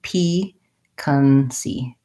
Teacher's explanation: it is first syllable stress, has the tense E, piquancy.